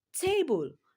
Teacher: So in the word table, te is longer than bull. So table, it has a stress on the first syllable